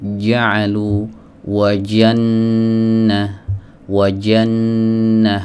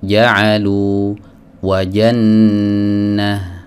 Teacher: Sifat yang ada pada huruf jim itu adalah sifat syiddah ya, jadi dia bukan rokhawah. Maka kalau ada yang mengucapkan huruf jim ada rokhawahnya, maka ini termasuk kesalahan.